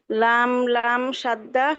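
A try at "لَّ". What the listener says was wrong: না তো, লাম লাম সাদ্দা না, লাম সাদ্দা ফাতহা।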